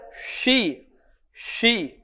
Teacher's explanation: biaso lidah juga berada di tengah lidah ada yang syi syi ujung lidah bertemu dengan langit-langit